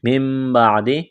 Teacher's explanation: نون کو میم سے تبدیل کرنا ہے، غنہ کریں گے